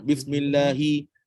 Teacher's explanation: Ba dengan mim tak ada nafas. Sin ada nafas.